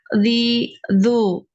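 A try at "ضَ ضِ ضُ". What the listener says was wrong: Tapi dinaikkan lagi pangkal lidah. Tahu ya pangkal lidah? Lidah bagian paling belakang. makhraj huruf qaf ya.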